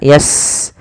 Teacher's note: sin punya sifat namanya hames. Alirkan nafas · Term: hamas